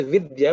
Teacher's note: It's unaspirated or alpa prana, means the amount of air you give is less.